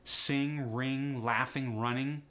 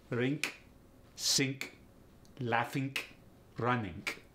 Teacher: This next one is probably my all-time favorite in the Russian accent. ING becomes INK. Ing becomes ink.